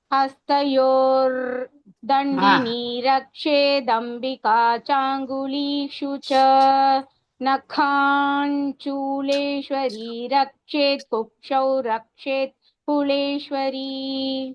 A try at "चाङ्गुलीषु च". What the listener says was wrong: This cha is not dirgha, so try to avoid that dirgha.